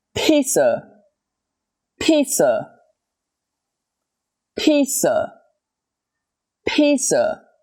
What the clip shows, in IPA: ˈpiːt.sə